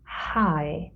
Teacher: The glottis or vocal cords come a little bit closer together, and we breathe out and we can hear the sound being formed. And so we call this a glottal sound.